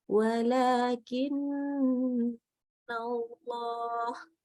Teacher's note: Nah, ini harus gunnah itu dipanjangkan minimalnya 3 harokat.